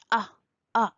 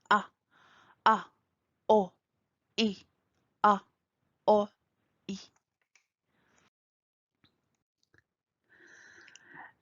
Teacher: Pour prononcer le alif et le hamza, on va utiliser le fond de la gorge.